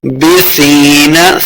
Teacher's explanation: سا کو نرمی کے ساتھ پڑھیں گے، یا مدہ دو حرکات اسے لمبا کرنا ہے